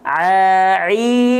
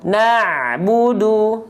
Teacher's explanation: Banyak orang melafalkan ain terlalu ke bawah, jadinya hamzah.